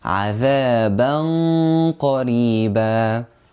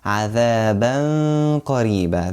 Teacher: So qaf is one of the heavy letters. So we make the ghunnah heavy. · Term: heavy ghunnah